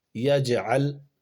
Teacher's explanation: جیم کی آواز آ رہی ہے آپ کو پلٹ کر کے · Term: قلقلہ